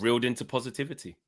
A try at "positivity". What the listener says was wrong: When I'm going to say positivity, I don't go twer. Do you start off positivity with a twer?